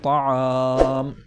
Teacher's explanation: حرف مدہ کے بعد سکون وقف کی وجہ سے آ رہا ہے، لہٰذا یہاں پر مد ہوگا اور 3 الف کے برابر کھینچ کر پڑھا جائے گا، جیسے طعام۔ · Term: مد سکون عارضی وقفی